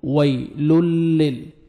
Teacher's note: آپ کو لام کو لام کے ساتھ ملانا ہے اور لام کو آپ نے ہلانا نہیں ہے، لل ایسے نہیں پڑھنا۔